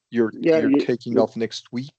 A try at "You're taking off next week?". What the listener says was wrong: You're taking off next week? You might want to go up a little.